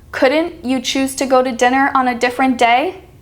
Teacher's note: see how the word couldn't is stressed all of these are stressed at the beginning because they're very